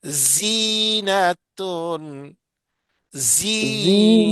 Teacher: اب زا کی آواز باریک اور سیٹی والی ہے، باریک بھی ہے اور کیا ہے، سیٹی والی سیٹی ہے.